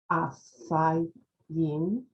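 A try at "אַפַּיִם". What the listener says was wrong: This is a pay because it has a dot in it.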